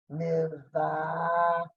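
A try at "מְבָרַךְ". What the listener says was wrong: Mivarach. Two ahs right there.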